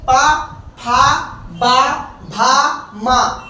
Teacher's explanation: देखो जब आप पा बोलेंगे तो दोनों होंठ क्या होगा? स्पर्श करेंगे, छुएंगे। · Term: ओष्ठीय व्यंजन